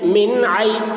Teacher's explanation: نون کو ظاہر کر کے بلا غنہ کے جلد پڑھیں گے، اس کو اظہار کہتے ہیں۔